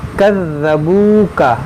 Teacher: وَإِن كَذَّبُوكَ فَقُل لِّي عَمَلِي، یہاں پر دیکھیں ذال ہے، کذبو ذال، کذبوکا یہ واو مدہ ہے، واو ساکن سے پہلے پیش ہے، تو اس کو تھوڑا کھینچیں گے